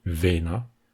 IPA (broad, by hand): ˈβen‑a